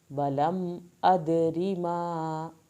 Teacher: دال کو قلقلہ کرنا ہے، را کو پتلا پڑھنا ہے